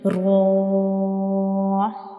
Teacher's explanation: ابھی را کے اوپر کھڑی زبر ہے تو ہم را کو 2 سیکنڈ کے لیے لمبا کریں گے